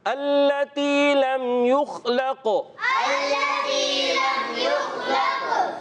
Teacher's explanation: خا کے اندر قلقلہ نہیں ہوگا, قاف کے اندر قلقلہ کریں گے